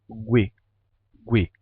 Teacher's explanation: você vai ter o som de u ganhando um sonzinho de de G no começo